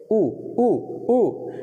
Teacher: मुंह के जो ओंठ हैं वो गोल हो जाते हैं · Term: ओष्ठ